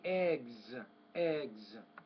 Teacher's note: when you have the S sound after voice consonants it's typically a z sound